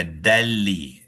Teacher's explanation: nun yang sukun tu telah dimasukkan ke dalam lam ni ya dan makhraj dan sifatnya tidak lagi di nyatakan, tidak lagi dizahirkan. Apa termasuklah er sifat dengung dia pun nun yang sukun tu ada sifat dengung dia ya sebab dia huruf khaisyum. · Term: idgham bila ghunnah